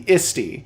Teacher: knowing that the H is almost silent, it would be isti